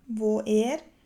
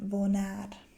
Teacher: Die beiden Vokale wo und a, also o und a, werden durch ein N verbunden